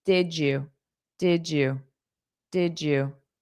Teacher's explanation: phonetically d y creates a j sound